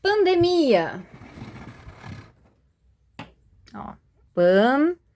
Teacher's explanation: as duas vogais, elas foram separadas